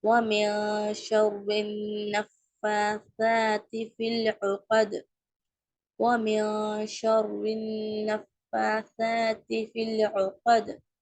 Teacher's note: ஐன் இருக்கு, middle of the த்ரோட்ல இருந்து pronounce பண்ணணும்